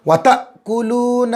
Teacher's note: حمزہ پر جزم آئے حمزہ کو جھٹکے پڑیں گے. الف پر جب کچھ نشانی آ جائے تو وہ حمزہ بن جاتا ہے.